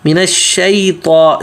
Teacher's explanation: طا موٹا اور سیدھا